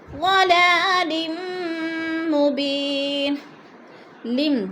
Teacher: دو زیر تنوین، میم مشدد، ادغام کریں گے، سختی سے جمع کر پڑھیں گے